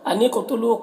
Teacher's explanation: قاف کو پر پڑھنا ہے اور قاف میں قلقلہ بھی ہو رہا ہے